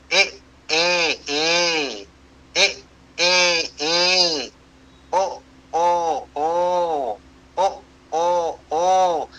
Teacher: दक्षिण की पांचों भाषाएं उनमें ह्रस्व एककार है। ह्रस्व ओकार है।